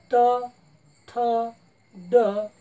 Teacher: जिभेचा फक्त शेंडावरती होते आणि मुखातील वरील भागाला दातांच्या थोडा मागे स्पर्श करते